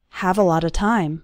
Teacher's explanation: All of those little words, a lot of, run together into a lotta.